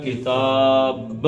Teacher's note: ایک تو اس کو 4 حرکتیں کھینچیں گے، دوسرا با کا کلکلا کریں گے